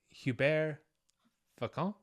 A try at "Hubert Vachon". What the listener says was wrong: You don't pronounce the H.